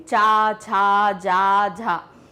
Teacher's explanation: तो ये कहां से बोल रहे हैं? हम तालू से, यानी कि हम अपने मुंह के जो आंदरूनी ऊपरी हिस्से हैं उससे बोल रहे हैं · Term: चा वर्ग